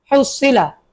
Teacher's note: গলা চাপ দিয়ে হা উচ্চারণ করতে হবে